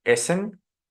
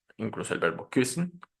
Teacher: siempre que tengamos la doble S, vamos a tener el sonido de la consonante sorda, es decir, S